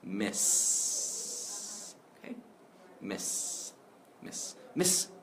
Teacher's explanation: hold that s sound out long to really feel how strong you should be ending this word